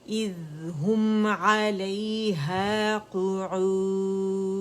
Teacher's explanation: ہا کے لیے دمہ ہے تو ہونٹ مکمل رول کریں گے، اور میم پہ جب آئیں گے تو ان رول ہو جائیں گے